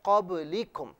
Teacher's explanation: suppose آپ ملاحظہ فرمائیں قبلکم، با کو اس طریقے سے ادا کرنا ہے کہ مخرج میں آواز لوٹتی بھی محسوس ہو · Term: قلقلہ